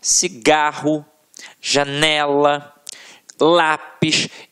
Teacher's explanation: a sílaba tônica está na penúltima sílaba · a sílaba que a gente proferiu com mais força sempre esteve na penúltima sílaba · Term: paroxítonas